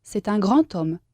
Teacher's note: la D siempre se convierte en T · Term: sonido T